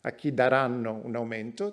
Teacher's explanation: This is the default way to pronounce a WH question in Italian, to whom they will give a pay rise. So the nuclear pitch accent is on the verb daranno.